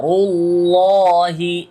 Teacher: আল্লাহ শব্দের লাম এটা মোটা হবে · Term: লাম মোটা